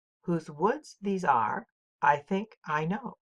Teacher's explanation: the consistent pattern of unstressed syllable followed by stressed syllable followed by unstressed stressed and so on